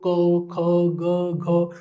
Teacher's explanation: क्योंकि भाई ये कंठ से उत्पन्न होती है ध्वनि अगर आप देखोगे भी तो क ख ग घ तो ये सारे कहां से देखने को मिल रहे हैं कंठ से डायरेक्ट ध्वनि आती है तो ये कहीं और टच नहीं होते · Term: कंठय